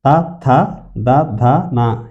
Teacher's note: త థ ద ధ న ఈ ఐదు కూడాను దంత్యాలు ఇవి దంత్యాలు దంతాలు సహాయంతో పలుకుతాయి కాబట్టి దంత్యాలు